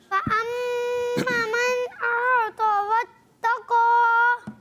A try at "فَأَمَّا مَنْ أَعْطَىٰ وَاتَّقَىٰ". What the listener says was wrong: دو غلطیاں ہو گئی. فاما اس میں پہلے سنیں، اس میں الف مدہ ہے تو کھینچیں گے، اور اعطا اس میں کھڑی حرکات، یہ بھی الف مدہ کے قائم مقام، اس کو بھی ایک الف کھینچیں گے، اور واتقا کا الف بھی کھینچنا ہے دوبارہ.